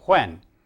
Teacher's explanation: Um, when if you notice where your tongue is positioned at the end of saying the word when, you'll find that the tongue, if you pronounce it as I do, uh, does not come so far forward as to touch the teeth. But in Chinese, it does.